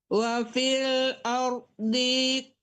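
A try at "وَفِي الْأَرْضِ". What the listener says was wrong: Nah, masih tetap tertahan. Masih tertahan. Jangan wa fil ardi. Nah, itu tertahan namanya, Bu. Kan nggak ada panjang di ya. Wa fil ardi qita'um. Ya, suara nggak boleh disambung-sambung ya, Bu ya.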